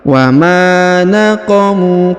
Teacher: Huruf ma dipanjangkan 2 harokat karena di depannya terdapat alif.